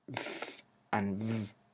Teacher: of articulation for both consonants is the same is the teeth the upper teeth with the lower lip so it's not bilabial because it doesn't have the two two lips